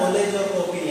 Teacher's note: इसका उच्चारण ओ और आ के मध्य होता है। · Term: आगत स्वर